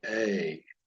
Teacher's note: And so if you say the word A without realizing it, there's a little Y sound in just pronouncing the tsere vowel. So this yod is capturing that or representing that Y sound, A.